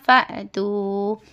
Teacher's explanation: حمزہ کے اوپر سکون ہے تو حمزہ ساکنہ میں جھٹکا ہوتا